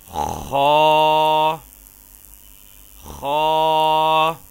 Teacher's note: ہا خا خا، خا کو موٹا اور پر کر کے پڑھیں گے